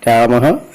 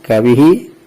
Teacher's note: This syllable is called visarga, which has a half sound of ha, h.